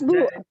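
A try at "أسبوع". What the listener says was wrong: start with an u. Start with u. Usbu'. Usbu'. Usbu', which means, of course, you know, On the alif, there is a dhamma. U. Start with u. Start with u.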